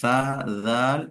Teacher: ایسے ہی ثنایا علیا کی جو جڑ ہے اس سے لگے گا تو تعدل تو، لیکن زبان کی نوک ثنایا علیا یعنی اوپر کے جو سامنے کے دو بڑے دانت ہیں بیچ کے، اس کا جو کنارہ ہے بالکل، اس سے اگر لگیں گے تو سا ذال وہ ادا ہوتے ہیں۔ اس کا مخرج یہ بتاتے ہیں کہ زبان کی نوک اور ثنایا علیا کا کنارہ، اس سے سا ذال وہ ادا ہوتے ہیں